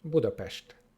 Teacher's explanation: that letter S at the end is pronounced as sh